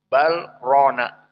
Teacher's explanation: sedikit membaca dengan sukun, bal rona, tidak diidghamkan.